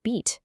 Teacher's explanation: Just think of the long e sound you make in the word beat. Your tongue is high up and forward in your mouth and it just stays there. · The simplest type of vowel is called a monothong. This is just one pure vowel sound where your tongue stays in a single position the whole time. Just think of the long e sound you make in the word beat. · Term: monophthong